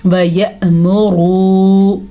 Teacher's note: را کو پر ضرور پڑھنا ہے کیونکہ را کے اوپر پیش ہے